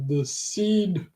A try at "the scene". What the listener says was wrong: So I know it sound like you said the seed. The seed. No, the scene.